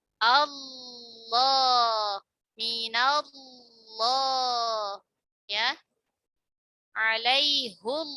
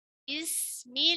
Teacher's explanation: Dan ketika sebelumnya kasrah, maka dia dibaca tarqiq. Perhatikan lam mufakhamah itu pangkal lidahnya naik